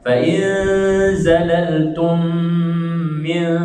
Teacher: pada ayat tadi tu fa in zalaltum min, dengung tum min, dua harakat itu.